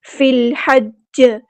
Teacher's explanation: فا کو ہم نے لام کے ساتھ ملا دینا ہے، حمزۃ الوصل ہمارا ڈراپ ہو جائے گا ، لام یہاں پہ لام قمری ہے، ہا کو مستحلق یعنی